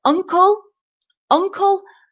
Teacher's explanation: the first syllable is stressed and the sound at the beginning is UN un sounds like